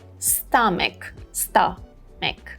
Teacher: We have a schwa sound here after M